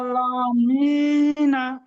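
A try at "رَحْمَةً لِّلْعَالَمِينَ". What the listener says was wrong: মাশাআল্লাহ, আলহামদুলিল্লাহ, খুব সুন্দর হয়েছে।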